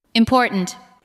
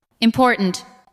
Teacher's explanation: The second part receives the strongest beat. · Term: word stress